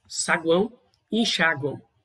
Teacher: Nessas palavras vão perceber que você não nota um sopro no seu dedo aí. E também pode ser nasal. O ar vai ser parcialmente pelo nariz. E aí o mesmo macete, levando o dedo próximo ao nariz aí, vocês vão perceber um pequeno sopro sobre os dedos.